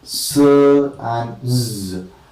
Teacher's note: S and z, we say that these two are alveolar fricatives because s, the front of the tongue is against the alveolum or teeth ridge, and you call it alveolar fricative.